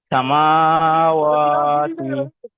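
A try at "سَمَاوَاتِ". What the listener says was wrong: বলছেন, সামা টান নেই ভাই, সামা মাটা টান নেই। সে ভাই সামা টান দেন, মিম খাড়া যাবার মা টান দেন,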